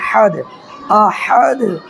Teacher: دیکھیں یہاں پر جب رکیں گے، وقف کریں گے، تو یہاں دیکھیے دال پر دو پیش ہے، دو پیش کو نہیں پڑھنا ہے بلکہ دال پر ساکن دے دینا ہے